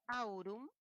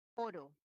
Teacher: Si antes eran 2 vocales, au, ahora pasa a uno solo. Ese proceso se llama la monoptongación.